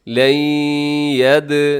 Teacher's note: نون ساکن کے بعد یا ہے تو یہاں ادغام ہوگا